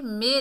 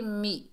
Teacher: इसे मे नहीं पढ़ना, मे ये मजहूल है, मारूफ पढ़ेंगे मी